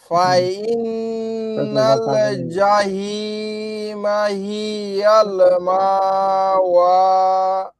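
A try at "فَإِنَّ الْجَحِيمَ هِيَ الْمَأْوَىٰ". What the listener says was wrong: হ্যাঁ এখানে দেখেন একটা লক্ষণের বিষয়, আপনার পুরাটাই হয়েছে, শুধু শেষে এখানে মিম হ্যাঁ মার টান দিয়েছেন, এটা টান হবে না কারণ জবরের বাম পাশে যদি খালি আলিফ হয়। এটা ধাক্কা দিয়ে পড়তে হবে মা আর আপনার প্রথমবার জাহি মা টান হয়েছিল, পরে আবার ঠিক করছেন।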